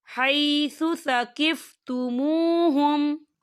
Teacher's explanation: یہاں میم ساکن ہے اور میم ساکن کے بعد واو آ رہا ہے، تو یہاں پہ اظہار شفوی ہوگا اور ہم اسے بنا غنّے کے پڑھیں گے